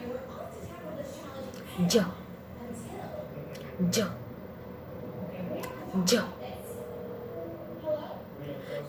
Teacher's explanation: Remember that J is an affricate sound, so it's important to completely stop the air in your mouth and then immediately release it with friction. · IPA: dʒ